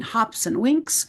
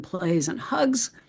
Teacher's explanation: sometimes pronounced s as in hops and winks, and sometimes z as in plays and hugs